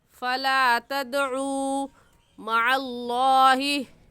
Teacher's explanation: क्योंकि वाव साकिन से पहले पेश आ गया तो वाव मद्दा होगा और वाव मद्दा को एक अलिफ की मिक़दार खींच कर पढ़ते हैं